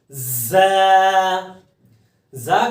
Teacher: آگے زا، زا کا مخرج سخت ہے اور اس کو سختی کے ساتھ زبان کی نوک نیچے والے دانتوں کے پیچھے جڑ سے لگا کر پڑھا جاتا ہے